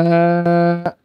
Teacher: দেখুন মিম সাকিনের পর আরেকটা মিম, এখানে তাসদীদ চলে এসেছে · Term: ইদগামে শাফাভি